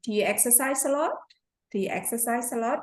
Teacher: when we have a yes/no question, we have the raising intonation.